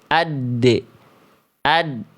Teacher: Tertunaikannya sifat syiddah atau tertahan suara pada huruf dal itu bukan pada saat kol-kolahnya.